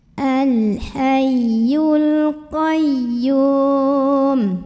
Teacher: Ada alif lam qamariyah karena alif lamnya bertemu dengan huruf qamariyah yaitu qaf. Maka lam ini kita bunyikan dengan jelas.